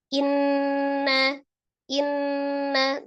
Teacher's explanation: Jadi tidak dipanjangkan hamzahnya atau juga tidak terlalu cepat ya. Jadi inna tetap disempurnakan kasrah di huruf hamzahnya.